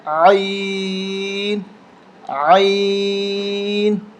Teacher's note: اس کو حلق سے نکالیں گے، حلق کے نچلے حصے سے